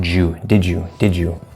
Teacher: So they would both mix with the y, and we get the equivalent versions. So that second D is going to sort of just blend, mix with the y, and we get ju